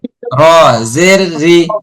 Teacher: যখন র সাথে জের হয় তখন বারিক হয় মানে পাতলা হয়